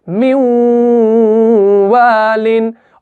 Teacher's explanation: नून साकिन जो है वो इस वाव के अंदर मुदगम हो जाता है, इस तजदीद के अंदर वो मिल जाता है।